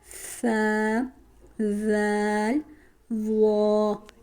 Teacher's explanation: जुबान की नोक जब ऊपर वाले दो दांतों के सिरे से लगे तो उससे सा दल वा अदा होते हैं